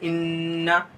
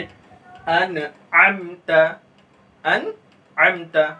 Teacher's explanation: यानी बगैर गुन्ना के हम पढ़ते हैं, इसमें हम गुन्ना नहीं करते हैं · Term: इजहार हल्की